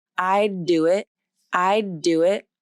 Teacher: My voice is on the whole time with this unreleased D. The tongue tip is up, but my voicing continues. So there's no break.